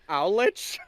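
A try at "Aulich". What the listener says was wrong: Yeah, a lot of people think it's pronounced Olich, but it's pronounced Olik.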